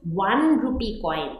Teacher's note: So the sound is like 1. The sound appears as if it starts with W.